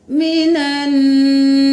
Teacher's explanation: نون پر تشدید ہے، غنہ کریں گے، یہاں پر 1 الف کے برابر دیر لگے گی